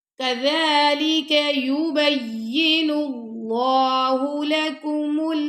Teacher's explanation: دیں گے، یعنی اللہ کی لام سے ملا دیں گے، اور اللہ کی لام ادھر موٹی پڑی جائے گی کیونکہ اللہ کی لام سے پہلے پیش آ رہا ہے